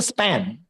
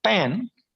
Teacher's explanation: p comes at the second position so in that case it will not be aspirated